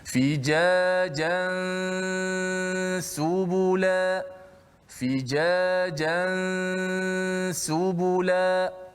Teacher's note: Pada jan tu selepas sebut ja saja, mulut kita terus bersedia berpindah pada huruf sin dan kekalkan tanwin ataupun nun mati itu pada gunnahnya sahaja.